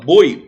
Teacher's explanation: o O é muito mais forte que o I. Você pronuncia com muito mais força o O do que o I. Certo? Por isso que ele decresce. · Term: ditongo decrescente